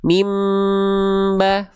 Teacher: Jadi bunyi an dibalik ke bunyi am.